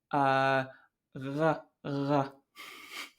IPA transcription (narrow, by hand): ʁ̞